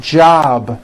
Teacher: job ends in a B, which is a voiced sound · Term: voiced B ending